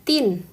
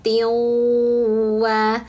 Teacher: Jadi bacanya jangan tin tapi tin wa masuk ke huruf wau dan dengungkan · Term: Idgham bighunah